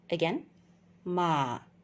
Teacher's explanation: It goes down, low tone. And when you pronounce this, it sounds like ma.